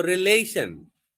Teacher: so stress is on the L, second syllable